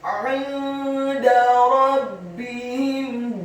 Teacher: huruf ra-nya dibaca tafkhim, tebal, fathah satu harokat. Huruf ba-nya ditasydidkan, ditekankan, dibaca tipis, kasroh satu harokat.